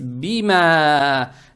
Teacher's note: Далее стоит буква мим с фатхой. Фатху тянем в 2 счета за счет алифа без огласовки. Это маттаби'и.